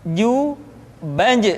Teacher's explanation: kalau kita melihat sifat yang dimiliki huruf ja dia tidak boleh mengalir nafas